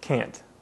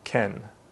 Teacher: when you say can't you make a nasal sound and you should feel a vibration in your nose